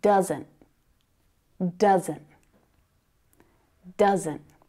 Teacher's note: And again, you can hear that stopped T sound, right? You've also got two syllables there.